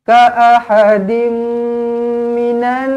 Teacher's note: Dim, jumpa dengan mim sabdu di sini, terus rapatkan bibir, dengungkan dua harakat, idgham ma'al gunnah di sini.